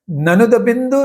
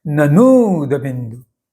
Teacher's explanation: न को बड़ी उ की मात्रा है इसलिए न का उच्चारण दीर्घ करना है लंबा करना है ननद बिंदु नहीं ननुद बिंदु न पर जोर देते हुए उच्चारण को थोड़ा लंबा करना है तो दीर्घ उ बड़ी उ की मात्रा का उच्चारण स्पष्ट हो जाएगा। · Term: दीर्घ ऊ